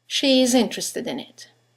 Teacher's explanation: there is a semi-vowel, y, that links the vowel at the end of she to the vowel at the beginning of is.